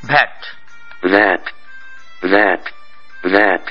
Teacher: গেছে কিন্তু ইংরেজিতে যখন ভলা হয় তখন ভ্যাট ভ্যাট ভা অর্থাৎ নিচের ঠোঁট উপরের দাঁতের সাথে মিলে যায় ঠোঁটের সঙ্গে মিলে না